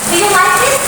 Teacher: The pitch of the voice rises at the end of the sentence. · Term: rising intonation